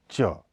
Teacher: इसके उच्चारण के समय मुख से थोड़ी हवा निकलने के समय कुछ रगड़ होती है इसलिए इन्हें स्पर्श संघर्षी कहा जाता है छ यह महाप्राण अघोष · इसका उच्चारण अल्प प्राण अघोष अग्र तालव्य स्पर्श संघर्षी होता है इसके उच्चारण के समय मुख से थोड़ी हवा निकलने के समय